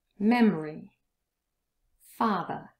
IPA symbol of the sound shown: ə